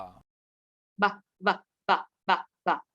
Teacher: Bilabial होठों पे जो प्रोनाउंस हो रहा है, दोनों होठों का इस्तेमाल कर रहे हैं।